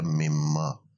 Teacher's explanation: نون اور میم کا مخرج بہت قریب ہے تو اس کو میم میں تبدیل کر دیا اور پھر بن گیا مما، من ما بن گیا مما۔ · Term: ادغام